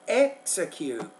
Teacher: So stresses on the first syllable.